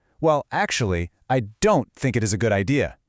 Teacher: we apply the primary intonational stress directly onto the negative auxiliary, so it sounds like this, "Well, actually, I don't think it is a good idea." This softens the interpersonal clash while leaving absolutely no doubt about the pragmatic disagreement. · Then, we deliver the objection, but we apply the primary intonational stress directly onto the negative auxiliary